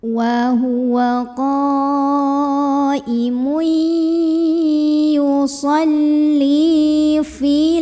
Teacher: Li di sini ada mad tabi'i karena ada ya sukun yang didahului huruf yang barisnya kasrah yaitu huruf lam. Maka di sini lamnya dipanjangkan dulu hanya 2 harokat ya.